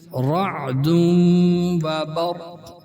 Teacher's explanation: تنوین کے بعد واو آیا ہے، لہٰذا یہاں بھی ادغام مع الغنہ ہوگا